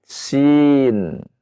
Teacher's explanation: dengan ujung lidah yang bertemu dengan pangkal atau gusi dari gigi seri bawah